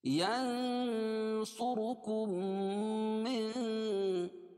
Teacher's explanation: میم ساکن کے بعد میم آ رہی ہے اس لیے ادغام شفوی ہوگا، اس کو غنہ کر کے پڑھیں گے